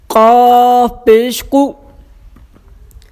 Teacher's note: اس کو قلقلہ یعنی باؤنسنگ آواز کے ساتھ پڑھنا ہے، موٹا کر کے پڑھنا ہے